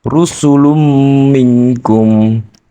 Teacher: Di situ terdapat ro' berharokat domah. Cara membacanya dibaca tebal, disertai bibir sedikit mencucu ke depan. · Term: tafhim